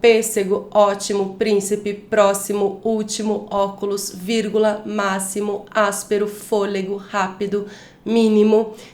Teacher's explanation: antipenúltima sílaba mais forte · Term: proparoxítonas